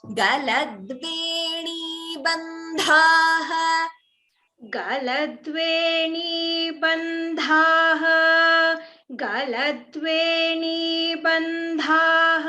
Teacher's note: Only dha is a mahaprana here, ba is alpa prana.